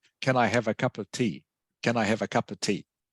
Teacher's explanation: this of in fact almost becomes like an ah sound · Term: weak forms, weak pronunciation